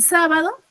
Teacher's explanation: en sábado sa era mi sílaba tónica es la única y la sílaba ba y do van a ser mis atonas cierto porque son las que pronuncio con menos intensidad mi voz